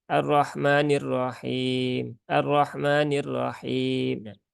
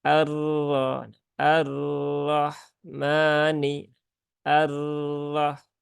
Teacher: Nah itu berlebihan getarannya